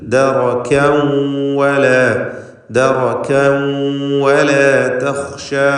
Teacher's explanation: കൂടാതെ ഷിദ്ദ, ഹംസ് തുടങ്ങിയ സിഫത്തുകളൊക്കെ അതിലുണ്ട്. അതിലുള്ള ആ കാഫിനുള്ള തൻവീനാകട്ടെ ഇദ്ഗാം ബിഗുന്ന ചെയ്ത് വാവിലേക്ക് ലയിപ്പിച്ച് മണിക്കുകയാണ് വേണ്ടത്.